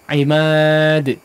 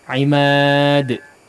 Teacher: Di qalqalah huruf dal terakhir ya, langsung dipantulkan.